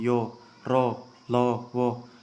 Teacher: सघोष आप यो बोलिए, आपके गले में कंपन होगी, यो रो लो वो, कंपन हो रही है, तो ये सारे जो हैं दोस्तों सघोष हैं।